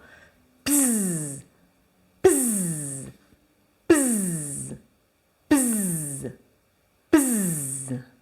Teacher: Et cette fois-ci, on va venir fermer nos cordes vocales pour produire du son. À la suite du peu, le se va devenir un z.